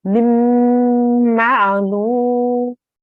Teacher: So when we're joining this meme to this meme, we need to make a nasal sound for about 2 seconds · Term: meme gunna